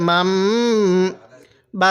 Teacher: মিম সাকিনের পরে যখন দেখব বা আসছে তখন সেখানে আমাদের গুন্না করতে হবে